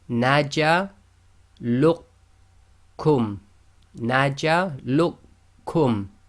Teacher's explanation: So we ignore the qaf completely.